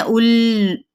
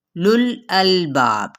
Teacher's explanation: उलुल मिलाना कैसे है, ये नहीं है उल इस तरीके से नहीं, यानी हमने इस वाव को साकिन कर दिया ना, इसके अंदर देखें ये हज़फ है, यानी इसको हमने पढ़ना ही नहीं है